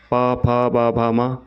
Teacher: ओष्ठ यहां से प वर्ग प फ ब भ म का उच्चारण होता है।